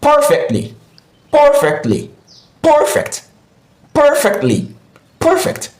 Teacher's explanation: Perfectly, perfectly stresses the first syllable, which is par.